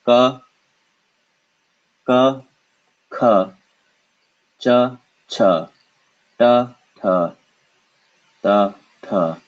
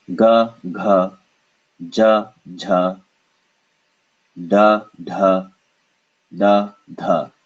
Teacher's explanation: non-vibrators of the throat come first, and then the stronger vibrating sounds come afterward